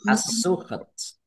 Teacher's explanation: alif lam syamsiyah karena tidak dibaca langsung masuk ke huruf berikutnya yaitu sin